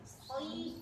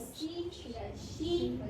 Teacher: Sod itu tempatnya sama kayak zai dan sin. Bedanya kalau sod itu tebal, dia huruf itbaq, tebalnya sempurna. Soinya aja sampai ada klok gitu.